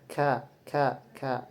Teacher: makhrajnya itu termasuk thabaqi. Kemudian tariqatulnya termasuk infijari adanya gesekan.